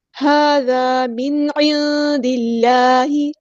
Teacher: نون ساکن کی آواز کو ہم یہاں ظاہر کریں گے کیونکہ یہاں پہ اظہار ہو رہا ہے